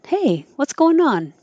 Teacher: going changes to goin or goin, and then the in goin connects to on and sounds like non